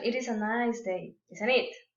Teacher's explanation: if you expect agreement that time the tone will fall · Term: falling intonation